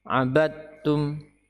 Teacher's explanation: huruf Dal tidak ada bekasnya sama sekali tidak ada bekasnya sama sekali tidak terbaca dan tidak perlu dinampakkan